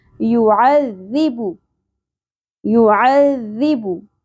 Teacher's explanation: عذی، عین وسط حلق سے ادا کرنا ہے، ذال کو باریکی سے ادا کریں گے. عذی بو، با کے اوپر پیش، زیادہ نہیں کھینچنا